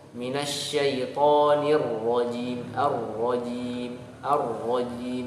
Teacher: Nah, itu salah. Harusnya ro ditasydidkan dengan sempurna, agak ditahan ketika mentasydidkan ro.